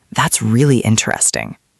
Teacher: That one is easy. voice went up at the end. It was high-pitched and fast.